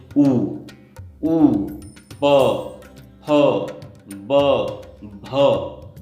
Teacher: इनमें होठों की सहायता लेनी पड़ती है, इसलिए इनको हम ओष्ठ्य बोलते हैं।